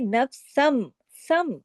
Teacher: इकलाब का कायदा लग गया इकलाब में आवाज बदल जाती है नून की आवाज मीम में बदल जाती है